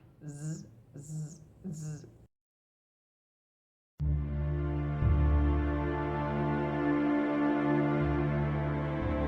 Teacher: La articulación es interdental. La lengua se coloca entre los dientes. Es fricativo, hace un estrechamiento por donde pasa el aire rozando. Es sordo, no vibran las cuerdas vocales y todo el aire pasa por la boca. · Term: Fonema Z